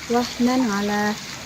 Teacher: Dalam kata wahnan ala terdapat hukum bacaan idhar hati karena fathah tanwin bertemu dengan ain dibaca jelas